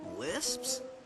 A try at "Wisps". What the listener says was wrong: No, Wisps, with a W.